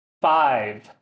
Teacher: the F sound, there's no vibration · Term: voiceless